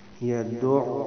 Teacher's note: یہ عین پہ شد ہے تو پہلے دال کو عین سے ملائیں گے، پھر دوبارہ جو ہے اس پہ پیش پڑھیں گے